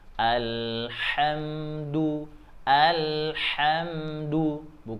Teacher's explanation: Hai untuk kemudian ada mim sukun setelah minum sukun di sini ada huruf Dal maka tidak boleh dengung jadi harus dijelaskan saja disempurnakan matinya huruf mim